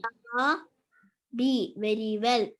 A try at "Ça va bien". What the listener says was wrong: Ça va bien, not being. Bien.